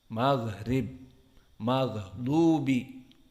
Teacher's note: gha jahr namun rokhawah. Maksudnya nafasnya tidak boleh keluar namun suara masih ada yang bocor